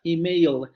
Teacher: O la palabra email con esa L final oscura, la velarizada